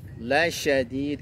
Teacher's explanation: Ada yang menyebutnya dengan sin besar. Itu dia punya sifat tafashi, ada suara yang berhamburan ketika mengucapkan huruf shin.